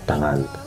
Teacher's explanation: Dalam vokal T itu udara dihasilkan atau ditutup melalui gusi atas dan dihembuskan tanpa suara